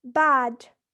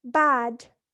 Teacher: Now for A in bad, it is produced with the lips stretched and the tongue front in the lowest and most forward position possible